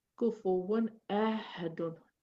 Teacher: I have to pronounce my Tanween and my Noons. I'm pronouncing them without making a gunna on them. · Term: Idhar